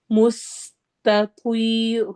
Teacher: سین میں سیٹی والی آواز ہے، ت باریک، توی توا ہیوی، رو رو کو ہیوی پڑھنا ہے اور الف مدہ کرنی ہے، چونکہ سٹاپ کرتے ہوئے ایک زبر ڈراپ ہو جائے گی تو جو ایک زبر کے ساتھ الف رہ جائے گا وہاں پر الف مدہ ہوگی۔